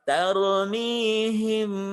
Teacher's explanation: Ya, kadar harokatnya 2. Jadi gunah itu mendengung di rongga hidung kadarnya 2 harokat.